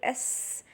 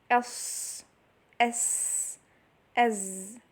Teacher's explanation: sharpness in the sound of the letter produced from it passing through a tight passage. And this is the most important thing, that it passes through a tight passage, so it produces this sharp sound. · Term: whistle